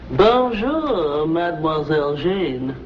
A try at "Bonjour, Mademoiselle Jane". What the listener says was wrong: That's very good. Except for the mwah. Must be soft. Mwah. Watch my lips closely. Mwah.